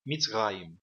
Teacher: aqui o Hirak é uma vogal curta e o Sheva, que vem depois do Hirak, será mudo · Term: Sheva mudo